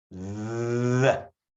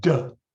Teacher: The big difference with the d sound is that that's a short sound. You can't stretch out a d. But the th sound, you can stretch it out as long as you want.